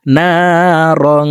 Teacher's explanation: ইকফা গুন্না নাকের ভিতরে লুকাইয়া গুন্নার সহিত পড়তে হবে